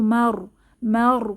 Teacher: হয়ে যাবেন 34 নাম্বার আয়াতম এখানে তানভীনের পরে মিম এসেছে মোটা সাকিনে এর আগে জবর আছে তো র মোটা করে পড়বো